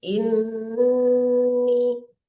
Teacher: Inni itu artinya dengung ya. Agak ditahan sedikit.